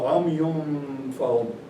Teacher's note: You don't pronounce the noon, it only the gunna appears. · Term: ikhfa